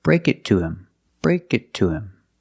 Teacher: To him or to her. And with both of these words, him and her, most of the time the H is silent because these are not stressed words. · The T in it is a stop T. Link it to the next word, break it to.